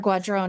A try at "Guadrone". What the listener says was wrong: Close enough. Guadrone. You're supposed to roll the R, but I can't do it very well.